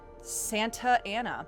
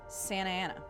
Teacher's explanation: RS and some of the T's disappear. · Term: Californian accent